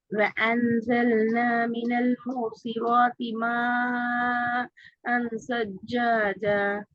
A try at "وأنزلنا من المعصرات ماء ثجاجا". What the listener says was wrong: இதுல ஏட உச்சரிப்பு இன்னும் வரணுமே. وأنزلنا வ அ.